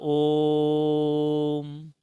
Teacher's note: प्लुत स्वर एक होता है इसका प्रयोग केवल संस्कृत में चलता है समझे और इसमें तीन मात्राएं होती हैं अर्थात ई के मुकाबले इसको बोलने में तीन गुना समय लगेगा